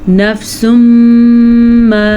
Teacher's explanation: نفس ما، ادغام بالغنہ، نون تنوین کے بعد میم متحرک آ گئی ہے تو یہاں پہ ادغام بالغنہ ہوگا